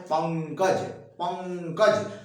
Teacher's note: तो ये हमेशा ध्यान दीजिए, जहां ऊपर ये बिंदी लगी होती है, जैसे मान लीजिए पंकज लिखना है, तो अब ये जो बिंदी वाला है, इसमें केवल नाक का प्रयोग हुआ है और उसको कहते हैं अनुस्वार